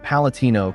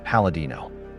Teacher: In the Marche dialectal evolution, the intervocalic T often becomes voiced into a D.